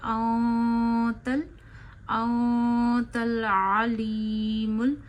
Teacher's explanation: तो नून साकिन की आवाज नाक में ले जाइए। एक अलिफ जितनी ठहराइए और छुपाइए। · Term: इफा का गुना